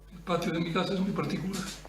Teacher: En este ejemplo también se observa una reducción de la intensidad, volumen bajo de voz, tono monótono